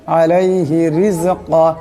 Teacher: এখানে রা নিচে জের আছে, এই রার আওয়াজটাকে পাতলা করে পড়তে হবে